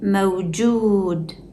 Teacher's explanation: The second waw is a long vowel because it comes after a dhammah on jim. When a dhammah appears before waw, it signals that the waw is part of the long vowel system, stretching the sound into ju